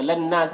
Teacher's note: نون مشدد ہے تو غنہ بھی ہوگا اس میں